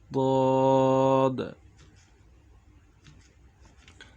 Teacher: 7 নম্বর মাখরাজ, জিহ্বার গোড়ার কিনারা উপরের মাড়ির দাঁতের গোড়ার সঙ্গে লাগাইয়া বদ।